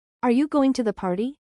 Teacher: It sounds like you're not really expecting an answer, almost like you're talking to yourself. There's no upward inflection at the end. It needs to sound more like a question.